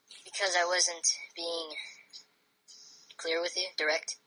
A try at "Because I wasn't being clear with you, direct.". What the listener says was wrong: Because I wasn't being clear with you, direct? And because you're not stating things, you're making a statement technically, but it sounds like a question because you raise your voice at the end.